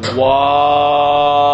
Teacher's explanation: দুইবার গোল করতে হবে। শুরুতে গোল, মাঝখানে মাদ লম্বা করতে হবে, আবার গোল।